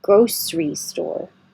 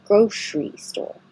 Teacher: you have the option of saying grocery with a sh or keep the S sound grocery both are fine grocery store or grocery store same thing